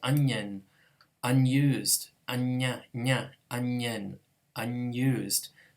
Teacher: this underlying alveolar sound gets pronounced as the palatal version because it's trying to match its following palatal consonant. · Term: palatalized